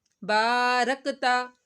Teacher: با کو لمبا کیا ایک الف کے برابر